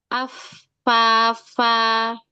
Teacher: huruf fa itu ada nafas. Harus ada mengalir udara. Af fa enggak boleh bibir atas ikut ikutan.